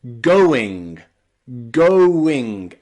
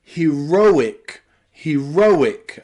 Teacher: in this case we are separating the O and the I and making two different sounds